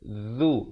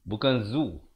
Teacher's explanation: Huruf zal, kalau boleh saya kongsikan di sini, sahabat-sahabat lihat di sini, dia di hujung lidah itu mesti keluar. Hujung lidah ini keluar sedikit di antara dua gigi.